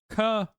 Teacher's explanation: instead of the front of the tongue hitting the mouth, k, it's like more the back of the tongue hitting the mouth. The roof of the mouth.